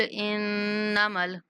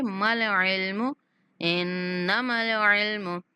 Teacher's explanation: قُلْ إِنَّمَا نون پر غنہ کریں گے